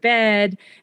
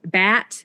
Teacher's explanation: the front vowels which are things like the word bed and word um bat get pronounced with slightly lower backer vowels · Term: California Vowel Shift